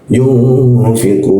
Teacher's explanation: Sama kita gunakan tiga ke depan juga karena itu ada huruf qo bertemu dengan wau mati dan nun mati. Ya, satu huruf hidup bertemu dua huruf mati. Maka dipanjangkan menjadi tiga ketukan.